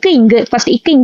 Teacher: நாவினுடைய முதல் பகுதியிலிருந்தும் அன்னத்தின் அடிப்பகுதியிலிருந்து பிறக்கக்கூடியது